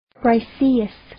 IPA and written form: braɪ'siːɪs (Briseis)